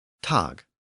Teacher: both the German and Dutch versions of the word end with a velar consonant, that G or K sound